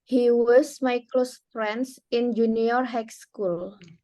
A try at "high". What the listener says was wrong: High school, GH-nya masih ada ya. Coba diulang.